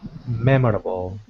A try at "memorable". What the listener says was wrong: Close. Memorable. Again, so we don't really pronounce that OR sound. So try it just saying mem, ra, bo. So memorable. memorable.